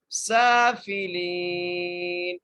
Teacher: سین کو کھینچ کے پڑھیں گے، سیٹی کے ساتھ پڑھیں گے ، لام کو ایک الف کی مقدار کھینچ کے پڑھیں گے